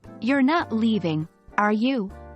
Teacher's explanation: If you're really asking a question and want to know the answer, your voice goes up at the end of the tag question. For example, "You're not leaving, are you?" with rising intonation.